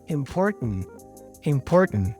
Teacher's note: I continue the Sound by now making it with my nose to pronounce the N